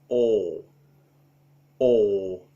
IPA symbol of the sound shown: ɔː